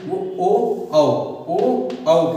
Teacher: ओष्ठ कंठ, ओष्ठ प्लस कंठ, मतलब ओठ के साथ साथ गले से बोला जाता है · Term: कंठोष्ठ